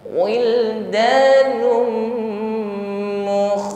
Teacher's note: nafas wuhim wildanum damah tanwin bertemu mim idgham bighunah Nun masuk atau idgham pada huruf mim berikutnya tahan dan dengungkan